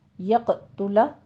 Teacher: یقتل میں نون ساکن کا قاعدہ ادغام الغنہ کریں گے، اور آگے قوف کو قوی آواز کے ساتھ آپ نے قلقلہ کرنا ہے